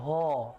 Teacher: ह मतलब कंठ से आवाज आ रही है